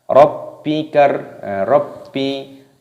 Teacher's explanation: baknya berharokat tasydid ini dimasukkan, diidghamkan dibaca Rabbi